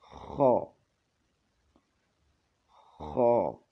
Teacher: خا بھی ایک الف کے برابر کھینچ کر پڑھا جاتا ہے